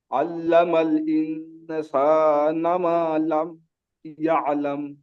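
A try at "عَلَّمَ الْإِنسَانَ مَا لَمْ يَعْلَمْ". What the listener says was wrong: এখানে মিমটা টান হবে, মিমটা টান হয়নি। আল্লামাল ইনসানা মা লাম ইয়ালাম। আল্লামাল ইনসানা মা লাম ইয়ালাম।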